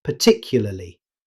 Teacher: In fast, natural speech, native speakers often shorten it to particularly. Notice how the middle -ya sound disappears.